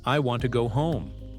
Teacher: I want to go home. Notice how want and home carry the stress, while to and go move quickly, almost disappearing. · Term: rhythm